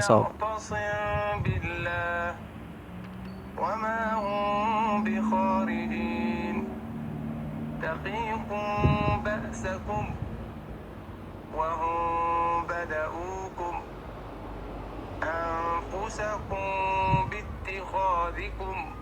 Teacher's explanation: Ikhfa shafawi terjadi ketika seorang mim sakinah bertemu dengan huruf ba. Cara membaca Ikhfa Shafawi adalah dengan menyenandungkannya selama dua harakat.